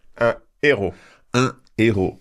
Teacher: So there's no liaison. It is completely forbidden.